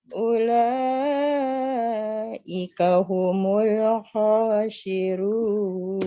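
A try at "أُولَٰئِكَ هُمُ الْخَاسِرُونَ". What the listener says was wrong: Sin kecil jangan sin besar. Khosirun. Coba.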